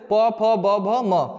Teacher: आगे देखिएगा, ओष्ठ व्यंजन, जिन वर्णों का उच्चारण करते समय होठों से होता हुआ वायु बाहर निकलता है उन्हें हम लोग कहते हैं ओष्ठ व्यंजन।